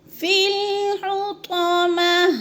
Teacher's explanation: وقف کی صورت میں گول تا کو ساکن کر کے پڑھ رہے ہیں